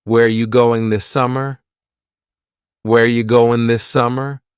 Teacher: Where ya, which is you, going, dropping the G.